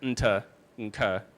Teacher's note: This means that you might be including for like a P or a T or a K label something, an interval that if you play it back will sound a little bit more like nta or nka or mp, with a little tiny nasal at the beginning